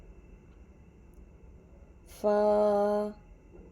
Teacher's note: فا اوپر کے دانتوں کے کنارے اور نیچے کے ہونٹوں کے تری والے حصے سے ادا ہوتا ہے۔